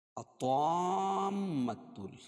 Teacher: الطامۃ، یہاں مد لازم کلمی مثقل ہے کیونکہ حروف مدہ کے بعد تشدید اسی کلمے میں واقع ہو تو مد لازم کلمی مثقل کہتے ہیں، اور اس کی مقدار 6 حرکت ہے، یعنی 3 الف کے برابر اس کو کھینچ کے پڑھیں گے